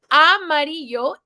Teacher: The double L in Spanish sounds like a Y with some variation depending on country, but we'll just say it sounds like a Y.